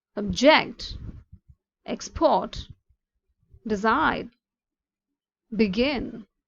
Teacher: Let's see how the stress on last syllable, that is verb